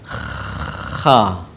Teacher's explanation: Huruf ini dikeluarkan dari tenggorokan yang terdekat dengan rongga mulut kita. Ciri khasnya terdengar suara seperti orang yang sedang mendengkur. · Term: huruf kha